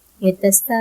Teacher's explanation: ஸோ நம்ம என்ன பண்ணணும்னா 4ல இருந்து 5 ஹரக்கத் நீட்டி எத்தஸ்தலூன் இந்த மாதிரி நம்ம ஓதணும் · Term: கொக்கி மத்து